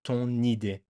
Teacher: you make the liaison with the N with the first vowel